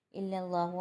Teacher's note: اللہ کا نام موٹا پڑھا جائے گا کیونکہ اللہ کے نام سے پہلے زبر ہے